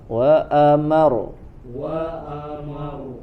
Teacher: rnya ada tasydid ya jadi dia lebih ditekan lagi · Di situ ro-nya ada tasydid ya. Jadi dia lebih ditekan lagi. Berbeda dengan nanti seperti di bawahnya huruf ro-nya di ujung ya, di akhir ayatnya tidak ada tasydid.